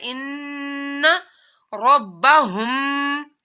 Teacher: ان کے اوپر تشدید ہے تو اس وجہ سے یہاں پر غنہ کرنا ہے.